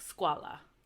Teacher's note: in UA, UE, UI, and UO, the U is pronounced like a W